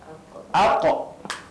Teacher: pangkal lidah di belakang tu kena pada anak tekak di kawasan lelangit lembut, dilepaskan, ditarik dengan cepat.